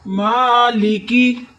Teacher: ना लाम को मोटा करना है ना काफ को, ना लाम पे कुछ हो रहा है ना काफ पे कुछ हो रहा है।